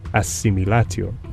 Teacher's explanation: D comes to share all the features of the nearby S and is completely assimilated to S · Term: assimilation